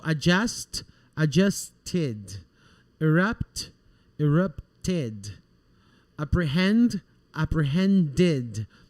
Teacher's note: when the verb ends in sound of T or in the sound of D, okay, we're going to pronounce the ED like an id.